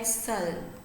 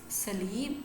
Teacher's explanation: When we say like salb, it's like dark l. When we say salib, this l is now here clear l.